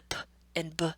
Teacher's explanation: They're both bilabial. So we know that's not the difference. They're both stops. So that's not the difference. The difference is in voicing. So again, when we're finding out that our student says "boem" instead of "poem," this is an error in voicing.